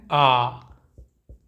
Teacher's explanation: तो डॉक्टर भी आ करवाता है तो मुंह पूरा खुल जाता है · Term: विवृत